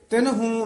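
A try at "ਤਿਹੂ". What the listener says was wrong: तिहू है नन्ना नहीं है विच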